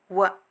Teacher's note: ದಂತ ಹಲ್ಲು ಮತ್ತು ತುಟಿಯನ್ನು ಎರಡನ್ನೂ ಬಳಸಿ ಉಚ್ಚರಿಸುವಂತಹ ಅಕ್ಷರ ವ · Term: ದಂತೋಷ್ಠ ಅಕ್ಷರಗಳು